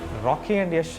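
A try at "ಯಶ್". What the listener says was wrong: It's pronounced like Yesh. Yesh. Yesha. Yesha. Yesh. like Rocky and Yesh, very similar to one another. So it's not really Yash. It's like Yesh.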